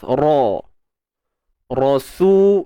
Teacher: Ra kita baca dengan tebal kerana baris atas. Ra. Rasu, su mad asli di sini.